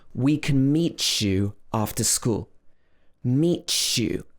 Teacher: So here, the t and the y blend together to become chew. Ch, ch, t, y becomes ch.